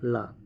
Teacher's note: इसके उच्चारण में जीवा का अग्रभाग मसूड़े को छूता है तथा दोनों और बगल से मार्ग खुला रहता है और इससे हवा निकलती है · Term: पार्श्विक व्यंजन